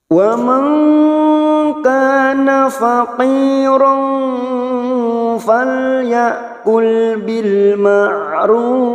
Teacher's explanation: Wa man nun sukun bertemu kaf, ikhfa hakiki kita samarkan bunyi nun sukun 3 harakat. Wa man kana kaf fathah diikuti alif 2 harakat.